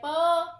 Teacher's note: प हमने अ ही क्यों निकाला इसमें से? क्योंकि प जब हम उच्चारण कर रहे हैं तो अ की ध्वनि आ रही है प, इसलिए हमने प से अ अलग कर दिया।